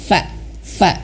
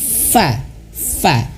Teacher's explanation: Fa bibir bawah menyentuh ujung gigi seri atas. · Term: huruf fa